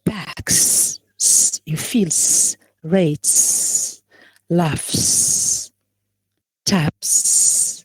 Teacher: we pronounce S after voiceless sounds. Okay, so we have K in here in packs.